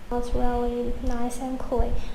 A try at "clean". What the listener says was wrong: Clean. So again, here she dropped the last sound. It's not clean, it's clean.